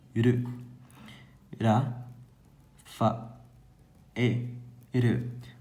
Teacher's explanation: O U não é tão fortemente pronunciado. Funciona quase como uma semivogal, que aí vai ter uma pronúncia um pouquinho mais apagada.